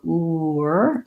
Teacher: The oo is a rounded shape. So when I go ooer, and I keep my voice on, then we hear the w. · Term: hidden W